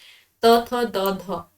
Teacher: दंत्य हो जाएंगे आपके त थ द ध